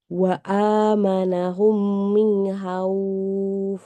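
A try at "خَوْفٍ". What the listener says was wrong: Khauf. Jangan hauf. Khauf.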